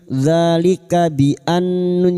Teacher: yang bertasdid gunah musyadadah kita dengungkan selama tiga harakat